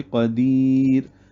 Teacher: را ساکن سے پہلے یا ساکنہ ہے جس کی وجہ سے را باریک پڑی جائے گی وقفاً۔ تو یوں سمجھ لیں کہ یائے لین اور یائے مدہ کے بعد را ساکن ہو یعنی اس پہ وقف کر رہے ہوں تو را باریک پڑی جائے گی۔